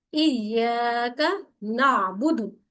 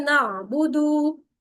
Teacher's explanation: اب یہ دال کو ہم نے کھینچنا نہیں ہے، لیکن آپ دیکھیے گا جب آپ لوگوں سے سنیں گے، خود بھی جب ہم پڑھتے ہیں تو ہم جلدی میں کیا کر دیتے ہیں نعبدو، لمبا کر دیتے ہیں، واؤ مت بنا دیتے ہیں، جو کہ ٹھیک نہیں ہے.